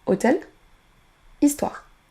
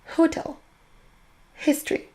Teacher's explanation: Il faut qu'il y ait de l'air qui sorte de votre bouche au moment où vous prononcez ce H. Vous pouvez tester en mettrant votre main devant votre bouche. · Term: son H